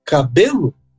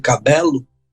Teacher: tem que falar cabelo, acentuando a segunda sílaba